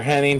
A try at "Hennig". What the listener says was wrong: Hennig. No, there's only 2 N's in his name. It's Hennig.